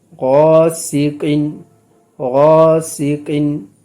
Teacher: سین حروف صفیر میں سے ہے، صحیح ہے، تو یہاں پر آواز تیز مثل سیٹی کی نکلے گی۔